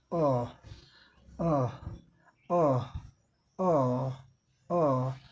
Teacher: Round your lips, आपके होठ round गोले हो जाएंगे, मोर देन फा, यह यहाँ दिया है, ये जितना इसमें गोला होता है इसको बनाने में, इसको बनाने में, इसका उच्चारण करने में जितना होठ गोला होता है उससे ज़्यादा गोला होगा।